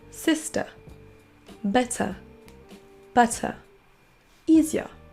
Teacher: Avec l'accent UK, ça va se terminer tout simplement par un son schwa.